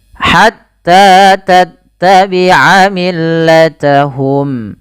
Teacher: panjangnya harus sama bunyinya karena dia ada fathah bertemu alif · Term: mad thaabi'i